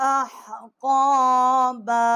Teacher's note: احقابا، یہ ہا جو ہے یہ وسط حلق سے ہے، آکے قاف ہے، یہ بھی وسط حلق سے جب زبان جو ہے اوپر کے تالو کی طرف ٹکر کھائے گی، بڑی قاف ہے، اس کا مخرج ہے۔